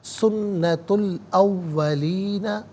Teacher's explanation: تا پر پیش اسے الاولین کے لام ساکن کے ساتھ ملائیں گے، درمیان میں سے الف حمزہ کو حذف کریں گے